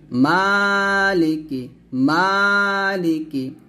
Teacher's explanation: মা এক টান দিবেন লাম জের টান হবে না